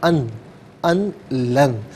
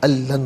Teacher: ये असल में था अन, अन लन, लेकिन जो है वो नून साकिन के बाद लाम आए तो नून साकिन को लाम में मिलाकर लाम की आवाज़ को अदा किया जाता है, तो अल्लन हुआ।